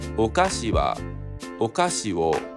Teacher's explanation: There is no accent kernel of the words.